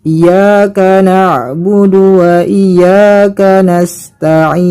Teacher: Adapun kesalahan yang kedua terjadi pada kalimat na'budu. Kesalahannya ialah karena memanjangkan du-nya. · Kesalahannya ialah karena tidak mentasydidkan huruf ya.